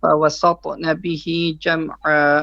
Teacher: It should be sa, only the ta is heavy.